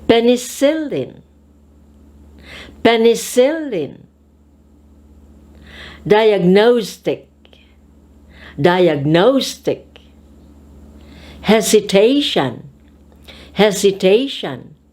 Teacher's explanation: we shall put an accent or stress on the third syllable of the word